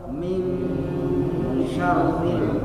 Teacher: Ini ikhfa hakiki namanya Pak. Cara bacanya samar dan mendengung ya.